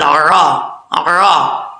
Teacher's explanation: عین کو پڑھتے وقت کلیئر کرنا ہے، حمزہ کی آواز نہیں آنی چاہیے، عین زبر عرا، عرا، ٹھیک ہے.